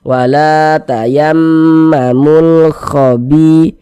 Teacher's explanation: sebelumnya ada harakat fathah berarti mim bertasydidnya ini hukumnya ghunah musyaddadah karena dia gunah maka cara membacanya digunahkan jadi suaranya itu kita tahan kita panjangkan sejenak